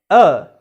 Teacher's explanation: it is between half open and half closed positions the central part of the tongue that is raised